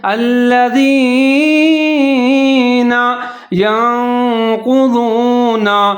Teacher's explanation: نون ساکن ہے، آگے قاف کے اوپر پیش ہے، قاف کو موٹا پڑھنا ہے۔